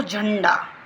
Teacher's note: ये बिंदु होता है। ठीक है, इसकी जो हम बोलते हैं ना, तो हमारी नाक पे जोर पड़ता है। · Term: अनुस्वार